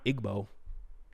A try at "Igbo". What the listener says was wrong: Igbo. Igbo. Igbo. Igbo. I didn't even pronounce the G, and you still did it again.